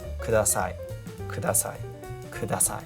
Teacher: So it's very, very flat. So there isn't really much fluctuation in the inflection.